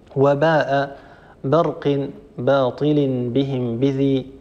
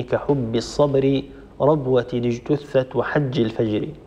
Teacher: واحرص على الشده والجهر الذي فيها وفي الجيم